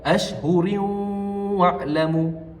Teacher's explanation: Bagaimana kita memasukkan tanwin itu ke dalam huruf wau berserta dengan dengung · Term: idgham maal ghunnah, idgham ma'al gunnah